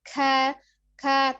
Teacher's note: dibacanya dengan samar atau ada hembusan nafas yang mengalir ketika mengucapkan huruf kaf ya. Jadi k tapi tidak juga berlebihan k tapi k ya, kita baca tipis saja ya. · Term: al-hams